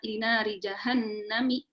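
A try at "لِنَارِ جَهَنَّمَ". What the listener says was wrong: Bukan jahannami, jahannama ya.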